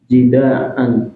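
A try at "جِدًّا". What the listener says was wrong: Jiddan. Ada tasjidnya, jiddan.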